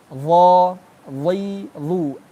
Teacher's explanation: aslinya makhrajnya adalah ujung lidah bertemu dengan ujung gigi seri atas